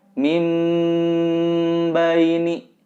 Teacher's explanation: Nah, ini harus ditahan, juga didengungkan, terasa mendengung di area hidung. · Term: iqlab